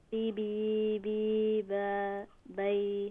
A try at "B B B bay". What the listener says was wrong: Okay, what's the difference in the, not bay, just bay. So, so by your rushing is B, B, B, bay. Don't say B, B, B, B, bay. Don't rush it like that. It's just B, B, B, bay.